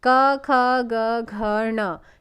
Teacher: पहला वर्ग है क वर्ग, क, ख, ग, घ, ण, ये आपके क्या आते हैं, कंठ वर्ग में आते हैं।